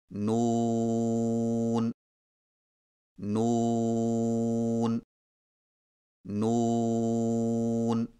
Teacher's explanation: نون کی ادائیگی میں زبان کے باریک کنارے کو اوپر والے دانتوں کے مسوڑوں سے لگا کر ہونٹوں کو چونچ کی مانند گول کرتے ہوئے باریک آواز میں پڑھیں